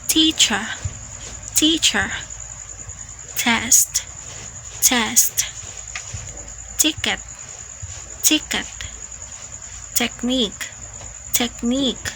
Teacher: It is a T that is aspirated, meaning you have to release air when producing it. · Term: true te, true T